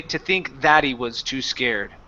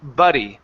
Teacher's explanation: Instead of doing a stop T, I would use a flap T and then drop the H.